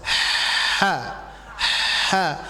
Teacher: Ada pangkal tenggorokan ha besar kalau kita istilahkan, ada tengah tenggorokan ha ya. Bunyinya itu adalah seperti Ibu menghembuskan napas.